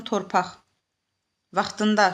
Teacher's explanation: vaxtında sözü samitlə başladığına görə torpaq sözünün sonundakı q x kimi tələffüz olunacaq